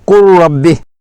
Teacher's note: لام کی آواز حذف ہو جائے گی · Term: ادغام متقاربین